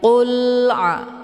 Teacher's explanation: Cara bacanya, alif lamnya dibunyikan secara jelas atau jelas bunyi L-nya. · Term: izhar qamariyah